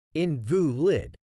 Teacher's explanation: When used as an adjective, it is typically pronounced as invalid, with the stress on the second syllable. When used as a noun, it is pronounced as invalid, with the stress on the first syllable.